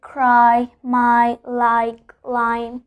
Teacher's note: So we pronounce it I. It's a combination of A, the vowel A, and the vowel I. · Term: diphthong